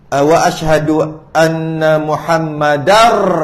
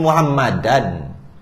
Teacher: nun atau tanwin tu hilang terus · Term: Idgham